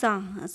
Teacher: सा बोलेंगे तो हमारे आपस में दांत मिल रहे हैं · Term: दंते वर्ण